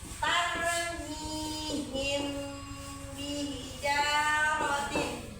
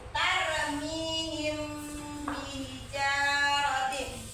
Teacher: Ikhfa safawi hurufnya cuma 1, yaitu ba. Nah, cara membaca ikhfa safawi dengan suara yang sama antara mim dan ba pada bibir